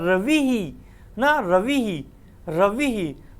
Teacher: क्योंकि ये ई के साथ उच्चारण हो रहा है, रवि ही ना, रवि ही, तो इसका उच्चारण स्थान क्या हो जाएगा, तालु